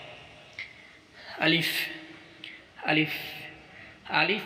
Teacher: আলিফ উচ্চারণ করতে কোনো টান নেই, কোনো মদ নেই।